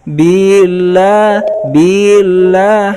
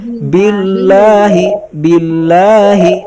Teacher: Billah di sini bi dengan lah itu langsung ditasydidkan ya. Jadi jangan sampai ada ayunan pada billahnya.